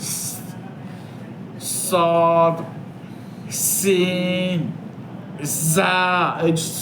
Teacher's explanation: সফির সিফাতের হরফগুলি আদায় করার সময় চড়ুই পাখি বা বাঁশির আওয়াজের ন্যায় বেজে ওঠে।